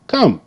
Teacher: K, k, k. And the O made the schwa sound.